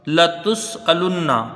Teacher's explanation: جلدی پڑھا جائے گا، لام کو نون سے یہاں ملائیں گے، نون مشدد ہے، ایک الف کی مقدار غنہ ہوگا